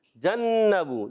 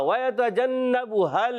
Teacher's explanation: نون مشدد میں ایک الف کا ہوتا ہے غنہ